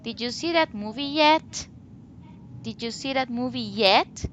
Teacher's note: rising intonation at the end of the sentence whenever you have a yes/no question